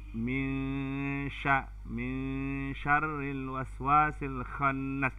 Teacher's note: Nun mati ketemu dengan shin, itu namanya ikhfa. Ikhfa artinya suara nunnya ini dimasukkan ke shin, tapi tidak ada seperti idgham.